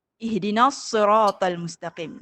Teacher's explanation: Nas tu nipis tapi sod tu tebal. Jadi nak bunyi tu memang sebab dia bertembung antara yang nipis dan tebal.